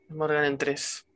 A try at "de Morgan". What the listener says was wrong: No es Morgan, es de Morgan.